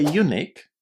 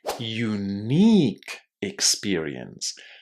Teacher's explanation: A very strong stress on the second syllable